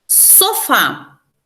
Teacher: é uma oxítona a última sílaba forte